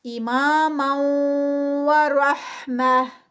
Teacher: اماما ورحمتا، را ہیوی، اور جب اس کو روکیں گے تو یہ تو جو تا ہے وہ ہا میں کنورٹ ہوگی